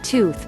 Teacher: Try saying the word tooth slowly and notice how your tongue first hits the inside of your incisors to produce the hard T sound and then goes in between your upper and lower teeth to make the TH sound